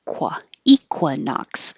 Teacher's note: while you're making your K with the back of your tongue high, make your lips round.